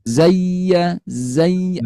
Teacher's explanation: Karena ia punya sifat rohawa ya. Bunyinya mengalir.